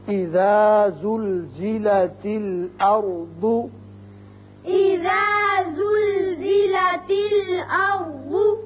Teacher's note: یہ جو زا ہے اس میں سیٹی کی آواز ہے